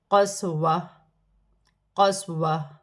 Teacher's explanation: دو زبر کی تنوین گر جائے گی اور تا ہا میں بدل جائے گی